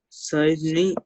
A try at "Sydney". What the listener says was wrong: It's not Sai. It's Sydney.